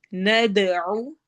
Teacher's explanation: دال پہ قلقلہ ہوگا، ایکو ساؤنڈ ہوگی